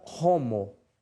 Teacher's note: O H é pronunciado como uma leve aspiração